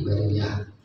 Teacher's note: kalau diwakafkan maka bunyinya jadi ha ya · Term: tak marbutoh